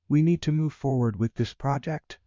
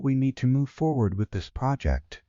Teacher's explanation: Upward inflection sounds uncertain. Seeking approval. · Downward inflection sounds decisive, confident.